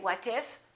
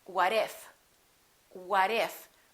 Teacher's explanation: look at this we have a t between two vowels and when the t is between two vowels it becomes a fast D so when we link it we don't say what if we